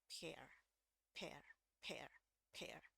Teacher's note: h-nya dibuang cuman ledakannya aja hereir hereir ya kalau ada huruf e ya tapi ini bacanya